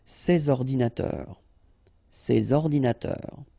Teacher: so you should make the liaison between s and o